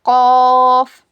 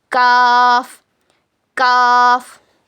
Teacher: यही डिफरेंस है दोनों में। और कौफ को मोटा पढ़ते, काफ को बारीक पढ़ते।